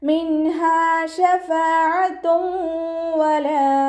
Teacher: മിൻഹ ശഫാഅത്തും വലാ നൂൻ സാക്കിനയ്ക്ക് ശേഷം ഇളുഹാറിൻ്റെ അക്ഷരമായിട്ടുള്ള ഹാ വന്നു. നൂൻ സാക്കിനെ വ്യക്തമാക്കി മണിക്കാതെ ഓതി കൊടുക്കുക. മിൻഹ എന്ന് പറഞ്ഞിട്ട് അവിടെ മണിക്കരുത്.